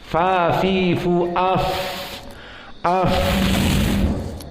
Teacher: sifatnya dia rokhawah dan hams, maka ada keluar udara dan suara.